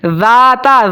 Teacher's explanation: ذال اور تا کو آپ نے باریک پڑھنا ہے، دونوں باریک حروف میں سے ہے